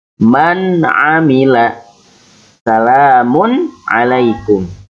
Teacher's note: tidak boleh mendengung atau disamarakan, tapi harus jelas pembacaan nunnya ataupun tanwinnya